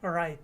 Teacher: when I said that final T, my tongue was stopped at the top of my mouth. That's why we call it a stopped T.